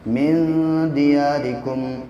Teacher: اخفا یعنی ناک میں آواز کو تھوڑی دیر ٹھہرا کر کے پڑھتے ہیں